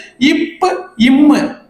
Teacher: நான் நீ என்று சொல்லும் போது உதடுகள் ஒட்டாது, நாம் என்று சொல்லும் போது உதடுகள் ஒட்டும். அப்ப இரண்டு மேல் இதழும் கீழ் இதழும் பொருந்துவதால் பிறக்கும் எழுத்து